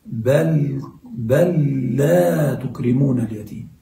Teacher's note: إدغام بل في اللام والراء